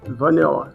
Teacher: notice the a didn't totally have that perfect short a sound